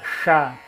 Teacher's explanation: chá, ponta da língua no céu da boca, que é como se fosse se jogar o S para dentro